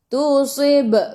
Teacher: Wa in tusib, so si su tebal, sifat hurufnya itbaq si. Tusib ba qalqalah sughra, lantunannya kecil